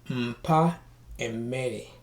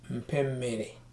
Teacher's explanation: the last vowel of the preceding word is dropped and replaced with the vowel of the succeeding word. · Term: Joining words